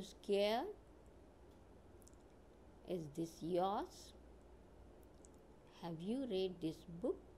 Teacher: see the tone Rises on these words scared yours book